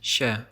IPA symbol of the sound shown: ɕɛ